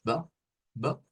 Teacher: con una O, aunque no es como bo, no es así redonda, sino es como bo, bo.